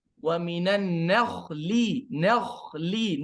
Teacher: Nun tipis, lamnya juga tipis, kha-nya saja yang tebal.